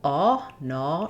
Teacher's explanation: Some of the errors that happen for non-native speakers on this vowel is that you may round the vowel. So in UK English, they have a rounded vowel ah, no, which we don't have in American English.